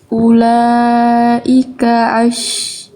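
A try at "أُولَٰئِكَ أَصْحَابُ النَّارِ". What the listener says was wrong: Jangan ain, jangan ash.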